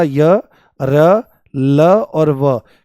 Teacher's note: ये सभी के सभी आपके सघोष हैं। सघोष मतलब इनके बोलने में कंपन होता है स्वरों की तरह से ही और ये सभी के सभी आपके अल्पप्राण हैं। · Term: अंतस्थ व्यंजन